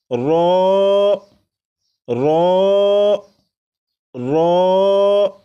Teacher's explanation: را کو 1 الف کے برابر کھینچ کر پڑھیں گے